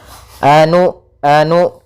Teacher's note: Maka usahakan ketika melafalkan hamzah sukun itu memiliki sifat yang mana hamzah memiliki sifat jahar dan sifat syiddahnya, maka tertahan nafas dan tertahannya suara kita